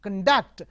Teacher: And if you say, I want to conduct the exam, conduct. So the stress is on second syllable as a verb.